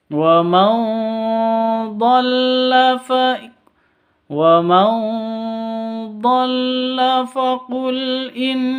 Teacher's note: ada nun mati bertemu dengan D cara bacanya samar didengungkan siap-siap ke huruf dodnya atau siap-siap ke huruf ikhfa hakikinya wa waman da faqul innama